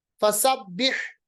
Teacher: ہا کا مخرج وسط حلق